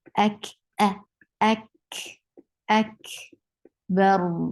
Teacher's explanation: For fatha, open your jaws, attach with kaf, and kaf will get sifa of hums. Hums is a flow of breath.